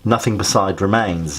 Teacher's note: the iambic pentameter is actually reversed here, which makes that line stand out and is more jarring.